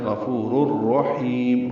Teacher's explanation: واللہ غفور، غین پر پڑھیں گے، فو واو مدہ ہے، را کو را سے ملا دیں گے، ادغام ہوگا، یہ ادغام ایک کامل ہے۔